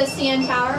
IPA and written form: siːˈɛn ˌtʰaʊ̯ɚ (CN Tower)